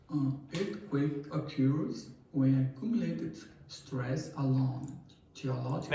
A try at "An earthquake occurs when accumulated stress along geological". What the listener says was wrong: Now, he paused after accumulated. Now, he paused after accumulated probably because of a pronunciation difficulty. But because of that, intonation is affected. I told you, you don't have to sound like a native speaker's pronunciation. But it is important that you do get close to native speaker's intonation.